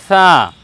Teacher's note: জিহ্বার আগার সম্মুখ ভাগের ওপরে দুই প্রশস্ত দাঁতের আগার সঙ্গে লাগিয়ে আমরা বলব ছা তাহলে ছা যেমন করে আমরা উচ্চারণ করেছি আমরা জালকে ওইভাবে